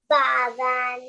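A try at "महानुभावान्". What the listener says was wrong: No, it's not the loud noise. It is coming of bha. Pressure. From the bottom of your belly button. See, even if you say ba loudly, it's going to sound ba only. Ba will come from top.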